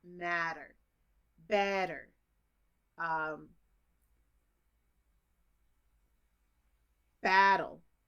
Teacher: when americans say a double t it sounds like a d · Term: double t sound